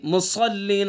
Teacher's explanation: صاد کو پر پڑھیں گے، ٹھیک ہے، چونکہ حروف مستعلیہ میں سے